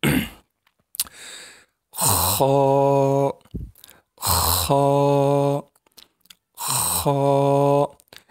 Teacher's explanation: اس سے آگے والا حرف ہے خا. خا بھی بالکل جہاں سے ہا نکلا ہے وہیں سے نکلے گا، لیکن تھوڑا اس میں ہم نے آواز کو دبانا ہے، گلے کو دبانا ہے، تو خا کی آواز نکلے گی.